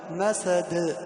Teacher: والدال في الأخير مقلقلة، مسد. بدل ما نقول مسد نهزهزها قليلا، نقلقلها، مسد.